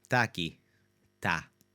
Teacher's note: It's largely going to be very, very slight eh, more of a sh but honestly, most Portuguese speakers in their day-to-day and their especially their very informal, familiar conversations, it becomes ta.